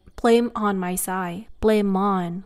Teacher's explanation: So in this case, people usually say, blame on my side, blame on, where they connect the M with the vowel ah that follows after